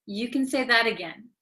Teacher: okay because it is between an A and another a so when a t comes between two vowels in American English it um becomes like a soft D sound